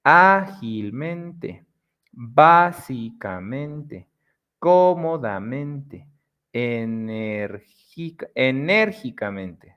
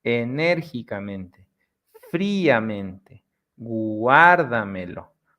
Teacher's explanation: the sound is very much at the beginning, and then the rest of the word is flat, flat, flat, flat, flat. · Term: sobreesdrújulas